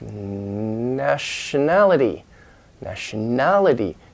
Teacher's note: Now the main stress is in that a, nationality. So then the first syllable, the nationality.